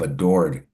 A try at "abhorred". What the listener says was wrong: Abhorred, not adored. Abhorred.